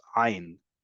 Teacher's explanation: Ayin, like I just said here, which sounds like the letter aleph, or ayin. Ayin, which is in the back of your throat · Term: Sephardic guttural way